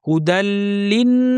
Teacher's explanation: ফিহিল কুরআনু হুদাল্লিন, হুদাল্লি দাল গিয়ে লামকে ধরবে সরাসরি। হুদাল্লিন, নুনের পর লম্বা গুন্না, এরপর আলিফ আছে, এটাও টানতে হবে।